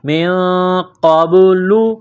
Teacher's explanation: با ساکن ہے، حروف قلقلہ ہے، تو یہاں پر قلقلہ کریں گے